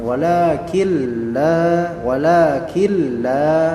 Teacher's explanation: nunnya ini tidak dibaca melainkan langsung menuju ke lam jadi nun mati ketemu dengan lam maka ini nanti akan dinamakan sebagai idgham dinamakan sebagai sebagai idgham jadi di Sin idgham tanpa adanya dengungan